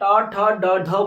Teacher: आपकी जो जीभ है वो क्या होगी, मुड़ जाएगी, उसमें एक टर्न आ जाएगा, इसलिए बोलते हैं इन्हें मूर्धन्य व्यंजन।